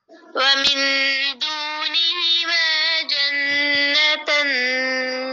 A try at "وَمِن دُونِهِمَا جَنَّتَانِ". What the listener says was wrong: नहीं तान नहीं खड़ी जबर है ना तो खड़ी जबर को लंबा करके नून की जेर हटा दें ومن دونهما جنتان